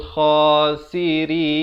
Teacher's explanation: Dan rin itu diwakafkan dengan 2, 4 atau 6 harakat.